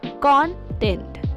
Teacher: when used as a noun the stress is on the first syllable content for example the contents of the box was scattered all